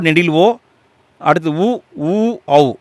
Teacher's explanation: இந்த 5 எழுத்துக்களும் இதழ்களை குவிப்பதால் பிறக்கும் எழுத்துக்கள்